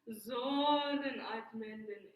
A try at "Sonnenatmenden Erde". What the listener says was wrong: Okay, but I feel like you're going Sonnenatmenden. Sonnenatmenden. So it's like glowing and warm and glorious, rather than choppy.